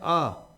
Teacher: जब हम आ का उच्चारण करते हैं तो मुख क्या होता है पूरा का पूरा खुला रहता है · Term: विवृत